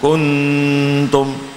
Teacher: Bunyikan semuanya dalam hidung selama dua harakat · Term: nasalisasi